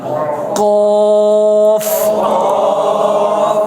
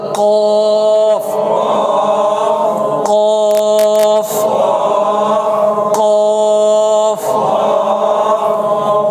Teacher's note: এই যে লাগিয়ে একটু টান দিবেন, কফ। আবার বলেন, যত মোটা হরফ জিহ্বা ফুলে যাবে, তালুর সাথে লাগবে কফ, ঠোঁট আকারে একটু গোল হবে